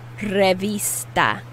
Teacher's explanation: i'm putting more emphasis on the i which is pronounced e in spanish